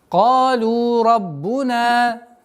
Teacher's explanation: Долгота в размере двух огласовок. Фатха удлиняем.